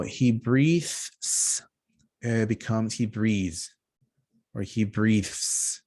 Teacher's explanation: the S ending is lengthened. Okay, so we make it longer, we elongate the sound.